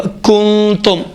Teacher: تیسرا نقطہ، نون ساکنہ کی آواز بینی سے خارج ہوگی۔ چوتھا، نون ساکنہ اور اخفا دو حرکت کے برابر میں مقدار میں کھینچا جائے گا، مثلا کنتم نہیں ہوگا، کنتم دو حرکت کے برابر میں اخفا نون ساکنہ کے اخفا کو کھینچا جائے گا، کنتم۔